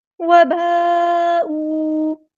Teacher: مد متصل، 4 یا 5 کاؤنٹ ہم نے اس کو لمبا کرنا ہے